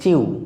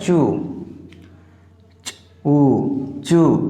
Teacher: বন্ধুরা আমরা এটা সাধারণত উচ্চারণ করে থাকি চিউ, কিন্তু এটা হবে চু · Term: লং ভাওয়েল সাউন্ড উ